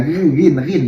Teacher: Kalau ghin dia tidak bergetar, dia hanya ghin ya di pangkal tenggorokan